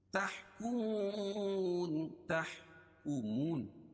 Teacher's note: واو ساکن سے پہلے پیش ہے اس لیے واو مدہ ہوگا، اس کو ایک الف کے برابر کھینچ کے پڑھیں گے اور وقف کی صورت میں یہ مد عارض وقفی ہوگا.